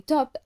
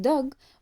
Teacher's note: For example, the p sound in pen and the b sound in book block airflow with the lips, while the t sound in top and the d sound in dog block airflow by placing the tongue against the alveolar ridge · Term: stops